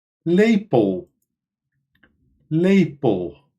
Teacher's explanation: Hierbij klinkt de schwa als een o.